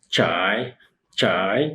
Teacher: This tone is the heavy falling tone.